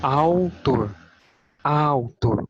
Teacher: Percebam a letra U, como ela quase não é percebida no som. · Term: ditongo